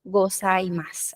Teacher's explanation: como en gozaimasu tenemos un su al final, pero no suena la u